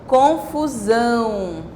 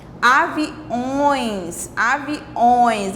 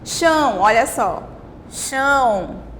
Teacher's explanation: Olha só, percebam que aqui em cima do A nós temos o tio, ó. É um som, como eu falei para vocês, que sai pela boca e pelo nariz ao mesmo tempo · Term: som nasal